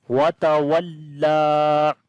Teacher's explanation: So this lam we long due to standing fatha on it, and also we read this lam bit strongly because it has a shadda sign.